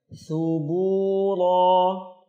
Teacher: huruf tha lembut sekali, ujung lidah keluar melewati ujung gigi atas bawah. Kemudian bu 2 harakat, ra 2 harakat tebal.